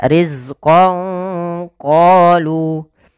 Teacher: Sehingga misalkan ban itu sama dengan ketika kita tulis dengan ba nun sukun maka dinamakan nun sukun dan tanwin. Maka samarkanlah suara nunnya kepada huruf qof